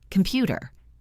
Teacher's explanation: The first syllable is soft. The last syllable is soft. The stress is in the middle.